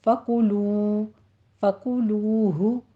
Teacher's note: آگے واو مدہ ہے تو ہونٹ گول رہیں گے